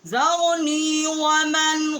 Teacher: ومن پہ ہم نے غنہ نہیں کیا، آگے حروف حلقی ہے